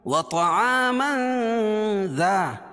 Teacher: یعنی ناک میں آواز کو چھپا کر پڑھیں گے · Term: اخفاء حقیقی